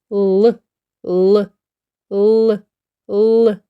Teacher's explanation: ми чули звук л спробуйте промовити звук л біля дз р ротик трішки відкритий зубки зближені а вузький кінчик язика сховався і впирається у верхні зуби